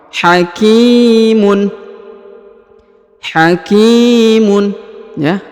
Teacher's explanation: Yang ini huruf ki, yang ini huruf k ya, harokat i dibaca ki. Di depannya terdapat ya sukun atau ya mati, maka dipanjangkan 2 harokat.